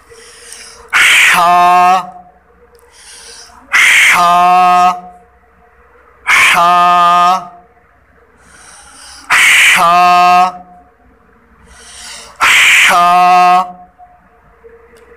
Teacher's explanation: ٹھیک ہے تو یہ ہا ہے. یہ اس کا جو مخرج ہے یہ حلق سے ادا ہوتا ہے. حلق کے درمیان والا جو حصہ ہے وہاں سے یہ ادا ہوتا ہے.